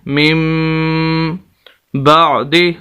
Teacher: یہاں پر بھی میم کو پڑھیں گے، نون کو نہیں پڑھیں گے، اور غنہ بھی کریں گے